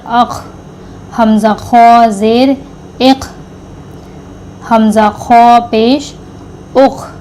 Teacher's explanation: غین خوا یہ حلق کے منہ کے جانب والے حصے سے ادا ہوگا جو منہ کے نزدیک کا حصہ ہے